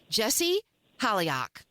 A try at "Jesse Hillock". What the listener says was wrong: Yeah, it's Hillock. There's no second I in there.